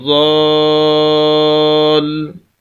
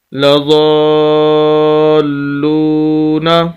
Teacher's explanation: یہ ضاد کے آگے الف ہے اور الف کے اوپر مد ہے، اور یہ سب سے بڑی مد ہے، 5 الف کے برابر اس کو کھینچنا ہوتا ہے۔ دوسری بات کہ لام اوپر شد ہے، اس کے اوپر مشدد ہے لام، یہ شد کی علامت ہے۔